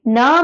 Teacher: न में मेरा पीछे का टंग आगे मूव करके आ रहा है।